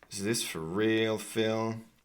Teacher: so the most important syllable here is real.